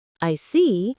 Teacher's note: When you show understanding with, I see, your tone drops slightly to show calmness. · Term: intonation